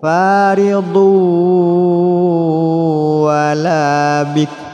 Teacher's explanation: Faridun tanwin bertemu waw, masukkan suara tanwin pada waw disertai dengung.